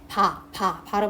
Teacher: 공기의 흐름을 아가타가 터뜨리는 소리예요 비읍 발음할 때 바 바람 해보면 두 입술을 딱 붙여 버려요 딱 붙이면 공기의 흐름이 막히죠 그러다가 입술을 빡대면 그때 비흡 소리가납니다 이런 식으로 파열음은 공기의 흐름을